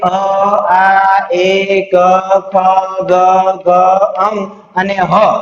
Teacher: આટલા વર્ણોનું ઉચ્ચારણ કરતી વખતે તમારા ગળા છે એની અંદર હલનચલન થતી તમને જણાશે. કારણ કે કંઠમાંથી ઉચ્ચારિત થાય છે એટલે એને કંઠ્ય વર્ણો કહેવામાં આવે છે · ઉચ્ચારણ કરતી વખતે જે વર્ણ કે અક્ષર છે એ ગળાની મદદથી ઉચ્ચારિત થઈ શકે અથવા તો આપણા ફેફસામાંથી નીકળતો ઉચ્છવાસ વર્ણનું ઉચ્ચારણ કરતી વખતે કંઠ સાથે અથડાય અથવા તો એની સાથે સ્પર્શ કરીને નીકળે તો એ વર્ણને કંઠ્ય વર્ણો કહે છે.